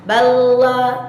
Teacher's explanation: Benar-benar berada pada posisi sisi lidah bagian depan mengenai gusi gigi seri atas, tanpa mengeraskan lidah, tanpa menekuk atau menukik lidah ke lak-lakan bawah ataupun ke langit-langit bagian atas. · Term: huruf lam